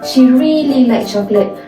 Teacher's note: The word really is stressed to show how she loved the chocolate. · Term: sentence stress